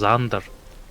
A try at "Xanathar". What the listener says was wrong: I'm pretty sure it's supposed to be Xanathars because there's a second A in there.